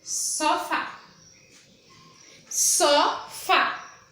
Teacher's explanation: A sílaba mais forte na palavra sofá é o fá, né? Fá, só, fá é a que eu falo com mais intensidade, com mais força.